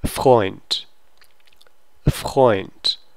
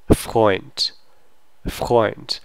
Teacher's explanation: And you get the nice, this D becomes T sound at the end of the word. And you have the articulated R, because if you have FR, you really do have to pronounce the R sound. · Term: unvoiced D sound